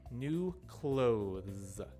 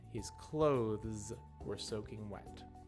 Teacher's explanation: So when you say the word cloth, there's no vibration on the TH. And when you say the word clothe, there is vibration on the TH.